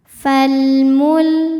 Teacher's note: Cara bacanya lam dibaca jelas atau disebut dengan izhar qamari.